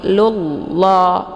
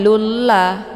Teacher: untuk bacaan lafdul jalalah ini dibaca tebal ya tafkhim karena sebelum lafz jalalah berharakat dumah jadi lullah ya bukan lulla